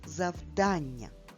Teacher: Наголос падає на звук А.